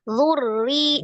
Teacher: Takrir ada sifat khusus yang dipunyai huruf ro, dia ada takrir atau getaran, tapi cukup sekali. Zurri sifatnya adalah tawassut, maka dialirkan ro-nya jangan terputus begini.